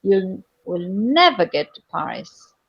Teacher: never will be with high key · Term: contrastive prominence